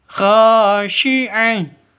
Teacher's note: Kha panjang dua ketukan karena ada alif diawali dengan fathah. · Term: mad asli